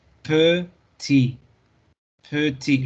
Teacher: La T al final no la pronunciamos.